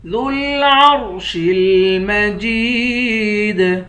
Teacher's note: وَهُوَ الْغَفُورُ الْوَدُودُ ذُو الْعَرْشِ الْمَجِيدُ، دال کو لام کے ساتھ ملا کر پڑھیں گے، عین کو را سے ملا کر را کو موٹا پڑھیں گے، شین کو لام کے ساتھ ملا کر پڑھیں گے۔ مجید، جیم کو یا کے ساتھ ملا کر یا کو ایک الف کے مقدار کھینچ کر پڑھیں گے، یا حروف مدہ ہے، آخر میں حروف قلقلہ ہے، یہاں پر قلقلہ کریں گے۔